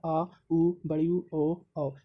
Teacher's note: उच्चारण में जीभ का पश्च भाग काम करता है।